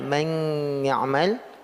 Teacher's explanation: masuk ke ya tapi nunnya masih tersisa dengungnya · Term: idgham naqis